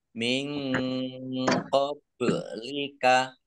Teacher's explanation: nun sukun bertemu dengan huruf qof bacaan Ikhfa juga dibaca samar-samar